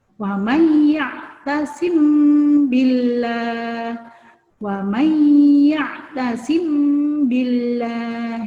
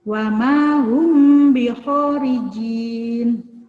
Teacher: Cara membacanya dibaca samar-samar disertai dengan mendengung kedua bibirnya terkatup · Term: ikhfa safawi